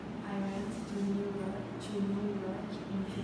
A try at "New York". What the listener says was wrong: York. Now work. York.